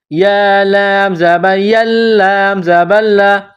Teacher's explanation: लाम में सख्ती करनी है लाम मुश दद है